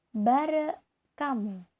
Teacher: baik bunyi eng dalam kata bareng maupun bunyi h pada kata hamu, keduanya berubah menjadi bunyi k. Sehingga konstruksi bareng hamu itu diucapkan bare kamu. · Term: asimilasi fonemis